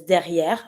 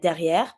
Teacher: When there's an E without any accent at the end of a word, you know that it's mute, such as derrière. I'm not going to be pronouncing my last E at derrière.